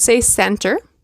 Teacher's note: did you notice I actually did not pronounce the T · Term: the T disappears